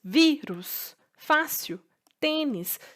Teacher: paroxítona e quando a minha penúltima sílaba é a sílaba mais forte